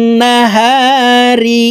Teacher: এই ওয়া তাসদিদওয়ালা নুনের সাথে নাকের বাসি থেকে 3 সেকেন্ড পরিমাণ গুন্নাহ করে ধরে রাখবো। এই গুন্নাহকে ওয়াজিব গুন্নাহ বলা হয়, কারণ হরকতের বামে নুনে মিমে তাসদিদ হইলে সর্ব অবস্থায় নাকের বাসি থেকে গুন্নাহ করিয়া পড়িতে হয়।